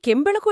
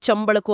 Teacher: ಕೆಂಬಳಕು ಇದ್ದಿದ್ದು ಚಂಬಳಕು ಆಗೋದು ಕೆಳದಿ ಚಳದಿ ಆಗೋದು ಈ ತರದ ಬದಲಾವಣೆಗಳು ಅದನ್ನ ತಾಲ್ಯವೀಕರಣ ಅಂತಾರಲ್ವಾ